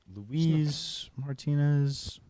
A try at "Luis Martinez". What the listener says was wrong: Can I correct you on something? You keep saying Louise. I think you mean Luis.